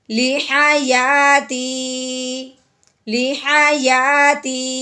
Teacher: بس اتنی سی آواز نیچے کو لے کے آنی ہے کہ معلوم ہو جائے کہ یہاں پہ بات مکمل ہو گئی ہے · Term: وقف